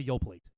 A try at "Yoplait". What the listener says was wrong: I don't think you pronounced the T in that. Yoplate. Yoplate. I don't think that's how it's pronounced.